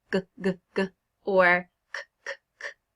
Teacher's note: you'll feel that it's happening in the back of your mouth. That's the place of articulation. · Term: back of mouth articulation